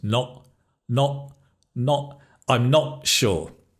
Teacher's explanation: you stop the air in your throat just before the consonant. So the not becomes not. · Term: glottal stop